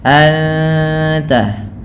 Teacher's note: Kemudian anta ada ikhfa hakiki, suara nunnya disamarkan kepada huruf ta dan ditahan bunyi dengungannya, anta. Kemudian al-azizul hakim, pada lafal aziz mad tabi'i, ini bukan anizu tapi azizul hakim.